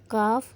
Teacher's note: کاف زبان کی جڑ اوپر والے تالو کے سخت حصے سے ادا ہوتا ہے